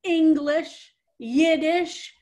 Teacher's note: our syllable emphasis is the first one so i kind of tried to make that as an emphasis